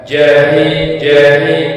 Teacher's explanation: pengucapan yang lebih tipis atau lebih dangkal dari ha